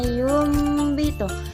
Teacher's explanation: cara bacanya yaitu dengan cara menggantikan huruf nun sukun menjadi suara mim seperti mim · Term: iqlab